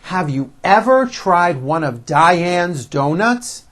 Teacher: notice how I slowly step up and then I work my way down again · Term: intonation